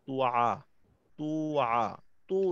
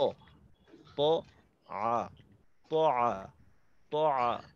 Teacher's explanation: জবরের উচ্চারণ তয়ে, ঠোঁট খোলা রেখে যেন তো না হয়। এখানে অনেক সময় দেখা যায় আলা তুআ, তুআ, তো না, ত, ত আ, ত আ, ত আ, ঠোঁট খোলা রেখে তারপর উচ্চারণটা করা।